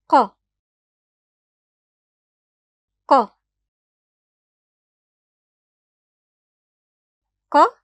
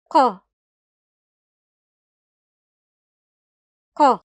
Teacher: [Q] is a hard sound. The back of the tongue rises toward the throat and blocks the air, then it releases the air forcefully producing the [Q] sound with NO aspiration